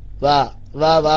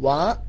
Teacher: ചുണ്ട് ശരിക്ക് പൂട്ടുന്നു പിന്നെ ചുണ്ട് ഇങ്ങനെ കൂർപ്പിച്ച് പിടിക്കുകയാണ് വാ പറയാൻ വേണ്ടി വാ പറയണമെങ്കിൽ ചുണ്ട് കൂർപ്പിച്ച് പിടിക്കണമല്ലോ അല്ലാതെ പല്ലിൽ തട്ടി ഫാ പറയും പോലെ വാ പറയാൻ പാടില്ല